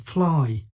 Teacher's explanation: the fricative f sounds of fall and fly, which, when spoken, force us to push air out of our mouths, creating a light, airy tone, which creates a lightness and freedom even in the phonetics.